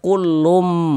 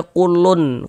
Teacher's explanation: Bunyi tanwinnya dimasukkan ke huruf mim. Kita baca kullum. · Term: idgham bighunah